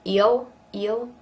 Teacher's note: Kind of turns into a little bit of a diphthong